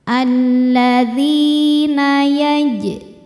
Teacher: Alladzina [bernyanyi] dzi adalah hukum mad yaitu mad thobi'i. Sebab ada ya sukun yang sebelumnya berharakat kasrah. Cara bacanya huruf dalal ini dipanjangkan dua harakat.